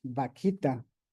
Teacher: En vez de usar la V, usamos la B labial, vaquita.